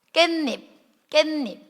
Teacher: 이거는 깨랑 잎이 합쳐지면서 니은 소리 덧나네.